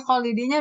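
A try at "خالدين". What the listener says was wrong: Ho-nya naik lagi, Ho. Jangan kho, masih kurang tafkhim.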